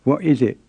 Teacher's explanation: it's the sound you hear in some kinds of english when people say what is it it's called a glottal stop